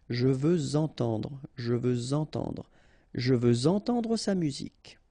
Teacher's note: Even if we've got this X at the end, well, with the liaison it will sound like Z.